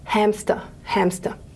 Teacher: here we've got a nasal and that means that our velopharyngeal port is lowered and the air is flowing through nicely